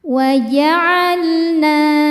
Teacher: Lam sukun disebut lam mutlak karena lam ini tidak berhadapan dengan lam lagi ataupun ro. Maka lam dibaca dengan jelas.